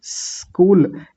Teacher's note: बिल्कुल हल्की सी दांतों में से आवाज निकाल के आधा स बोलेंगे और साथ ही कूल बोल देंगे